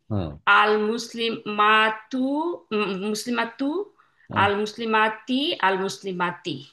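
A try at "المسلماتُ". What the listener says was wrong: হ্যা একটু টান দিয়ে বলবেন যেহেতু একটা মাদ আছে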